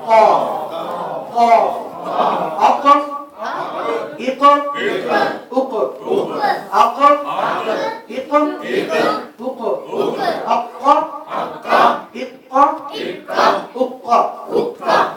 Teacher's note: زبان کی جڑ اور تالو کے نرم حصے سے قاف ادا ہوتا ہے. یہ تالو آگے جا کے جب پہلے یہ تالو سخت ہوتا ہے جو دانتوں کے ساتھ ہے، اسی سے جب آگے جاتا ہے تالو جا کے تالو کا نرم حصہ آتا ہے.